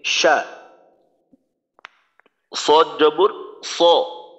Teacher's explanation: এই হরফটা আমাদের অবশ্যই মোটা করতে হবে যদি মোটা না করি ওই ক্ষেত্রে জের বা পেশ দিয়ে যখন উচ্চারণ করব তখন সিনের উচ্চারণের মতো শোনা যাবে